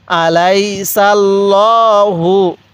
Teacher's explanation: আলাইহু এই লামের এর মধ্যে আমরা মোটা করে পড়বো লামটা কারণ আল্লাহ শব্দের লামের পূর্বে যদি জবর থাকে তাহলে ওই লামটাকে আমাদের মোটা করে পড়তে হয়